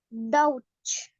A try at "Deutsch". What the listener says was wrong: Creo que me mete como una U ahí. Repítame una vez más.